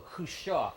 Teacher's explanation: and the accent's on the last syllable, Khrushchev, and that's how his name is pronounced in Russian, Khrushchev.